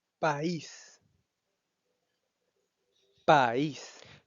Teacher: Como pueden observar, la palabra país tiene la vocal A y la vocal I juntas, que em, haciendo uso de la información que tenemos de los diptongos, básicamente indicaría que tuviéramos que pronunciarlo como país, pero al ser un hiato se pronuncia país en dos sílabas distintas